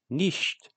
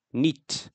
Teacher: certain sh sounds get dropped, where in Standard German nicht becomes nit. Other stops will also get dropped, like in the word wandern becomes wandra.